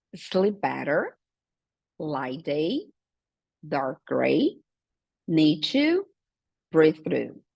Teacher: muitas vezes o som é mudo, praticamente, da primeira palavra. E por isso, a gente consegue fazer esse linking sound, que a gente vai juntar, né?